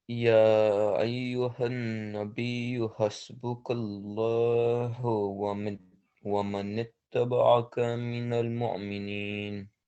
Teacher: So this Laam of Allah is elevated because it's preceded by a fatha.